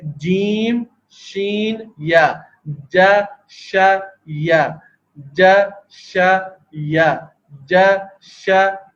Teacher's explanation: یا زبان کا درمیانی حصہ بلند ہو کر اوپر تالو پہ لگتا ہے، تو اس سے یا کی ادائیگی ہو جاتی ہے۔